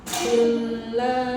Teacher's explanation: Ujung lidah ke langit-langit lam itu.